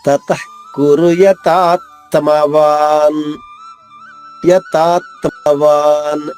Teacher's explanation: తతః కురు కురు యతాత్మవాన్, యతాత్మవాన్ తా దీర్ఘంగా పలకాలి. తా పైన ఆఘాతం ఉంది, దాని తర్వాత వచ్చే సంయుక్తాక్షరంలో మొదటి తా 2 తాలుగా చేసి నొక్కి చెప్పాలి.